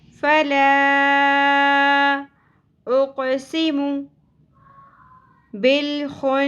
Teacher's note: قاف ساکن پہ قلقلہ ہوگا